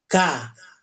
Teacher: huruf kaf ujung lidahnya tempat gigi di bagian bawah. Tengahnya naik, pangkalnya naik.